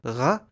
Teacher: the voiced velar fricative /ɣ/